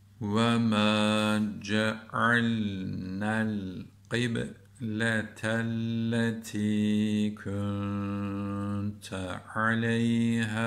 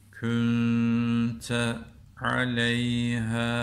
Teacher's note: Qibletelletî kunte aleyhâ derken h'yi uzatıyoruz. Niye? Çünkü harfi metten sonra dik hemze gelmiş. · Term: Metti munfasıl